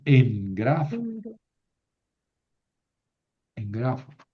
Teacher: Ante una gutural, la ni se convierte en gama.